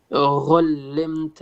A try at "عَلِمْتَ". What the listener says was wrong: not غين عين علمت عين